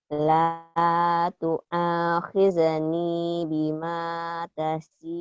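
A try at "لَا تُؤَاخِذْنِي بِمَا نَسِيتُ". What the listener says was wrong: nah, nasi bukan nata. Titiknya satu. La tu'akhidni bima nasitu wa la turhiqni.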